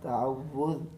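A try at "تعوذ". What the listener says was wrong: वुज़ क्यों कह रहे हैं। तअव्वुज़ लाल है।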